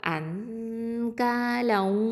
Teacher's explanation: இஹ்ஃபா பண்ணணும். ஓகேவா? மறைச்ச குன்னா செஞ்சு ஓதணும்.